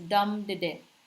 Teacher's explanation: followed by accented syllable and the ductilic ductile is the opposite it starts with accented syllable followed by two unaccented syllables